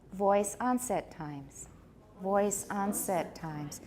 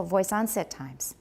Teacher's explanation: And onset gets a tonic stress. That's why it's higher.